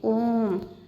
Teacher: ओम इसको हम तीन मात्रा के समय तक पढ़ेंगे